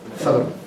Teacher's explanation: And that LM would be a place in Irish where you would get this epenthetic vowel, this vowel to sort of break up the L and the M